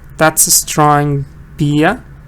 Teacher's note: This is British. He doesn't say the R.